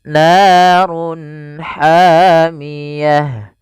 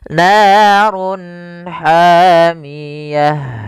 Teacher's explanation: suaranya harus dibaca dengan jelas izhar jelas halq karena dia bertemu dengan huruf-huruf halq setelahnya yaitu huruf ha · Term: izhar halqi